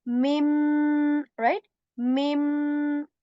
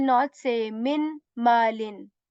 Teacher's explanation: we will skip the sound of noon